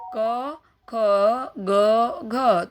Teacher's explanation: ये कंठ से निकल रहा है यानी कंठस्थ व्यंजन